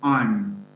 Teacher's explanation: The strong form am with the vowel a loses this vowel in the weak form, and only the m sound remains. I'm. There's no vowel.